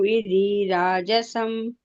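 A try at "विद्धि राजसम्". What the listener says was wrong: ವಿದ್ಧಿ ಧಗೆ ಮಹಾಪ್ರಾಣ ಒತ್ತಿದೆ.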